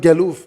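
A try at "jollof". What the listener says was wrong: Yes, jalouf. Jalouf, J by J, not G.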